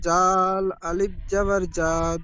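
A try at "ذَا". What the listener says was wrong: যা, আরো বেশি করে টান দেবেন এক আলিফ, যা, যা, আরো বেশি করে টান দেন, জাদা।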